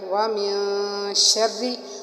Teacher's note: را کو ہم نے باریک پڑھا کیونکہ را کے نیچے زیر ہے